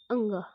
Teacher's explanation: चलिए देखते हैं अंग। अंग, हमारी जीभ मूव नहीं कर रही है, जो साउंड है वो हमारे गले पर, मतलब हमारे कंठ को जोर देते हुए आ रहा